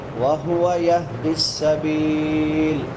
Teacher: سین سیٹی والے حروف میں سے اور آخر پہ جائے مدہ ہے. وقفاً جتنا مرضی لمبا کر سکتے ہیں.